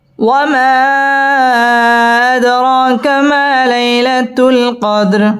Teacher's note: ওয়ামা মধ্যে মুনফসিল 3 আলিফ টেনে পড়তে হবে।